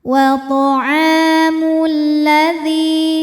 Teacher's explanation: Lam yang sukun tidak dibaca sehingga disebut dengan idgham syamsi, dibacanya dimasukkan.